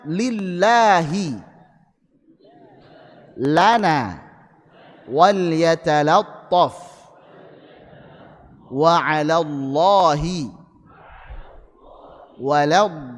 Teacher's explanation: ini lam saat kondisi tipis ingat huruf lam asalnya tarqiq kenapa kita sebut lam asalnya tarqik karena mayoritas kondisinya adalah tarqik.